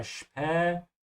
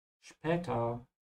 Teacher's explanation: the SP is pronounced like sh